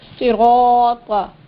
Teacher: यहाँ देखिए सिराता में तीनों हुरूफ मोटा पढ़े जाने वाले, साद भी, रा भी और ता भी